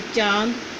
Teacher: अनुनासिक। इसका उच्चारण नाक और गला दोनों से होता है।